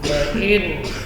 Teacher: nun huruf tawassul baina syiddah wa rakhawah, jadi tetap mengalir sebagian dari suara